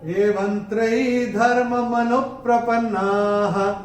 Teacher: और तीसरे चरण में व के ऊपर अनुस्वार के बाद का अक्षर है त, और अनुस्वार के बाद जब त आएगा तो अनुस्वार का उच्चारण होगा न